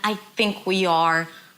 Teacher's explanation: Think is stress, it's a little longer. I is a bit more reduced.